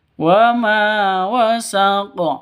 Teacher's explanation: Wama panjang dua ketukan. Karena ada alif diawali dengan fathah atau alif sebelumnya itu berharakat fathah. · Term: mad asli